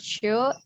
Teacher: The tongue is arched with the blade near the postal alveolar area.